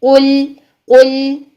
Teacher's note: منہ بھر کے لام کو ادا نہیں کریں گے، بلکہ قاف کو موٹا کرنے کے بعد لام کو باریک کر دیں گے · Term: لام باریک